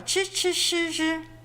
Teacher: In Chinese, they're called 卷舌音, literally translated, rolled tongue sounds, because you kind of have to roll up the edges of your tongue to pronounce them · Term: retroflex initials